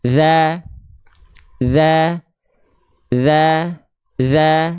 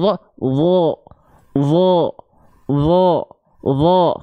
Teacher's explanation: Kalau huruf tebal, dho itu lidahnya tegang, lebih kaku rasanya. · Huruf zal itu huruf yang tipis, huruf dho itu huruf yang tebal.